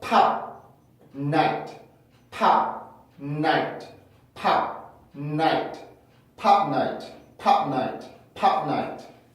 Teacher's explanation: 순간적으로 P 발음을 끊어주고 코로 넘겨주는 연습을 해주시면 좋겠고요